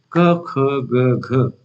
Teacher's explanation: 10वां है कंठ, जो है गले का वह हिस्सा जहां से क ख ग घ जैसी ध्वनियां निकलती है।